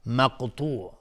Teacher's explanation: قاف از حروف استعلاء غلیظ تلفظ میشه. اینجا قلقله میخواد چون ساکنه و تا هم از حروف استعلاء غلیظ تلفظ میشه.